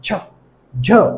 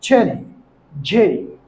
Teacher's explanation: জিহ্বার মধ্যভাগ উপরে তালুর সাথে লাগিয়ে বলতে হবে, চাপ দিয়ে বলতে হবে